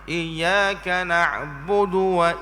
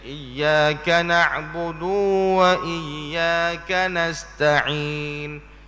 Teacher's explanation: dhammahkan dal, iaitu baris depan akannya dengan tidak memanjangkan bunyi. Maka na'budu du tu jangan beri panjang.